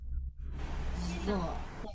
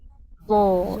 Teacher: Jadi ujung lidahnya menempel ke ujung gigi seri yang atas.